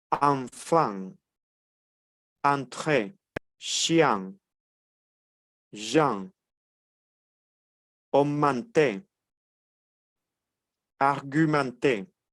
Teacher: Entonces, cada vez que veamos estas palabritas, la E y la N, es como si pronunciáramos una A y una N, pero de forma nasal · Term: sílabas nasales